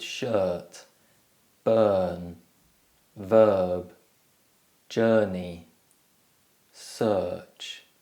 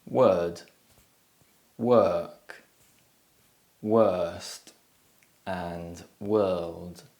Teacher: the er sound is also known as the long schwa because it's produced in exactly the same way as the schwa sound but it's long and stressed so you can find the er sound by producing the schwa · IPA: /ɜ:/